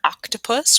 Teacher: let's focus on the short vowel, just like in the word octopus. We're going to say that ah sound.